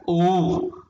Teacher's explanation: अब जैसे है आ, ये देखिए आ, आवाज आ रही है गले से कंठ, आवाज आ रही है गले से कंठ। फिर है ऊ, आवाज आ रही है ओष्ठ से आ रही है